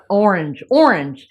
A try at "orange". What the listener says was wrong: Wait, you can't wait to get that R in orange.